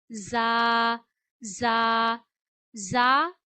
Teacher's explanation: जा सीटी की आवाज से अदा किया जाता है। और आप अपनी जबान की नोक ऊपर के दान जो हैं वो जहां दोनों मिलते हैं ऊपर और नीचे के उनके किनारों पे लगानी है।